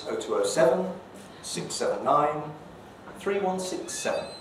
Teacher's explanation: you hear the fall and that's the end of the phone number